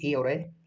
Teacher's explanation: कंठ तालव्य से ए और ऐ ए और ऐ उच्चारित होते हैं।